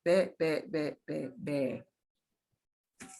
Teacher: you should feel very little or no puff of air with the letter B.